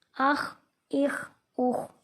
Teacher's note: آگے خواہ ہے حروف مستعلیہ، اس کو موٹا کر کے پڑھیں گے